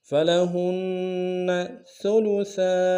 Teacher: فلہن میں ہا کو نون کے ساتھ ملانا، نون کے اوپر تشدید زور دیں گے ، فلہن ثلثا، سا کو باریک